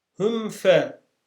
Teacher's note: mim harfi net şekilde okunur geçilir tutulmaz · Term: Mimi sakin ısar